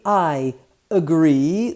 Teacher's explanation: The I and the A are connected with the J as a Y sound.